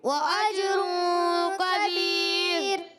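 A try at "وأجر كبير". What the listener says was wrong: کبیر کاف موٹا نہیں، کاف باریک، وأجر کبیر،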